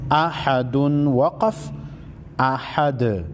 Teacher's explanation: حمزہ زبر ا، حا زبر حا، احا، دال دو پیش دن، احدن۔ وقف کی صورت میں دو پیش کو ختم کر کے دال کو ساکن کریں گے۔